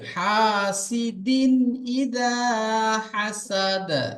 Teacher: আপনার পড়াতে একটু মজহুল হয়ে যাচ্ছে, হাসেদেন হয়ে যাচ্ছে, ওটা মারুফ পড়তে হবে